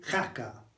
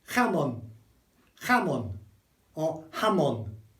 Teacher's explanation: It's mostly H, but with a little bit of K if you can. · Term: H sound